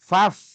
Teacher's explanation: Faf itu fa yang disukun. Tidak boleh fa itu dikolkolahkan. Biasanya mohon maaf orang sering fa dikolkolahkan.